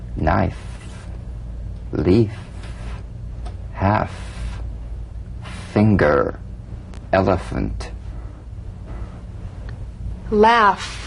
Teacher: feel the V then turn off the voice and continue in a whisper what you have left is the F · the f is a cognate to the V the unvoiced fricative la VA dental upper teeth to lower lip just like the V now feel the V then turn off the voice and continue